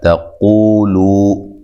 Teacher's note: قاف کو موٹا ادا کرنا ہے، تا کو باریک پڑھنا ہے